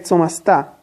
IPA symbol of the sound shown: ts